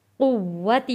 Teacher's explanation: واو یہاں پہ سختی کے ساتھ پڑھا جائے گا کیونکہ واو کے اوپر تشدید ہے